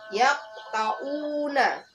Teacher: Biasanya huruf qalqalah kubro itu berada di tengah kata atau lafal. Sedangkan cara membacanya dengan cara memantulkan dengan pantulan yang tidak terlalu kuat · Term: qalqalah sugro